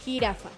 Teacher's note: J. Suena. Fricativa, velar, sorda.